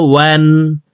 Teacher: ওয়াও হরফকে দুই ঠোঁট গোল করে দুই ঠোঁটের মাঝে ফাঁকা রেখে পড়ব।